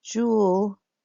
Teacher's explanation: I am slamming that 2-syllable part of her name into just 1 syllable.